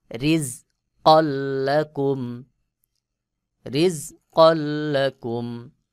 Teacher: র নিচে যের রয়েছে এই র কে পাতলা করে উচ্চারণ করতে হবে